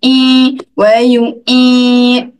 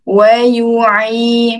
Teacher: Ain yang berbaris di bawah Ain, makhraj Ain dekat tengah kerongkong, pastikan Ain dibaca dengan lunak. Okey, bunyi dia Ai, bukan I. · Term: huruf Ain